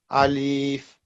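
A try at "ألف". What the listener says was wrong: No, not Alif. A simple, quick Alif.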